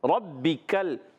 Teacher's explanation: रा पर ज़बर आने की वजह से रा पूरा हो जाएगा